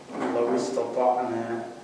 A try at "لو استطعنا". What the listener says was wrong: That's too strong for all, most of them. لو استطاع. That's better.